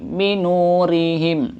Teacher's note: Ri-nya tipis karena tarkik.